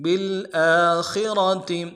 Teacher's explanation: حمزہ کے اوپر کھڑا زبر ہے، ایک الف مقدار میں کھینچیں گے، خا کو موٹا کرنا ہے